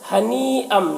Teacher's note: ہنی میں جو مد ہے اس مد کو مد متصل کہتے ہیں، اسے 3-4 الف کے برابر کھینچ کر پڑھتے ہیں